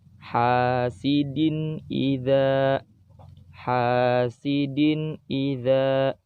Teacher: Di situ ada tanwin, setelah tanwin ada huruf hamzah, maka tanwinnya harus dibaca jelas. Hasidin idza. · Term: izhar